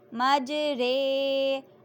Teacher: امالہ کی را کو اردو کے لفظ قطرے کے را کی طرح پڑھیں، یعنی را نہیں بلکہ رے پڑھیں۔ امالہ کے ہجے اس طرح کریں: میم جیم زبر مج را امالہ والی رے مج رے، ہا الف زبر ہا مج رے ہا۔